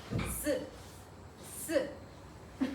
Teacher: 혀가 윗 잇몸에 안 닿을 때 발음할 때 안 닿고 살짝 떨어진 상태에서 공기를 마찰시키는 겁니다. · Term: 시옷